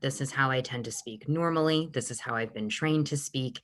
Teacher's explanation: You can hear that my sound is clear, it's less muffled. My mouth is also more open because the tongue is more forward. The jaw is moving a little bit more, and it's allowing again for that projection and a little bit of that warmth to come through. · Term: speaking more forward